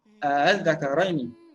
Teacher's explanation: Jangan panjang antara dua a tu. Jangan baca az-zakaraini, tidak.